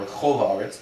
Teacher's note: the kol is not the accented syllable. It lost its accent because it's connected to the next word. So that holam gets downgraded to a kamatz katan.